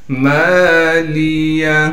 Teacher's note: میم کے بعد الف مدہ ہونے کی وجہ سے میم کو ایک الف کی مقدار کھینچیں گے